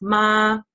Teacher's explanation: the first tone is a straight tone, so you just say like no intonation, no nothing, just ma. And then the second one is kind of like an up tone, so you kind of do a little ma, like a up towards.